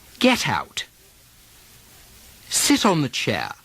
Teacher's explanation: when the next word starts with a vowel the tea often seems to carry over to the next word